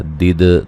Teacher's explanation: دال کو ہلا کے پڑھیں گے، قلقلہ کریں گے